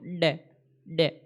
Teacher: डे डे मुड़ रही है, जीभ मुड़कर तालू के अड़ रही है, उसे बोलते हैं मूर्धन्य